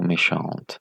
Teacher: c'est une syllabe ouverte. composée d'une voyelle libre, et cette voyelle libre, c'est une voyelle fermée. Pourquoi? C'est le E accent aigu, et dans les documents concernant les récapitulations des voyelles, la E accent aigu correspond ou se trouve dans les cas des phonèmes du E fermé.